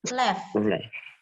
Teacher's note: gigi atasmu itu ketemu sama bibir bawahmu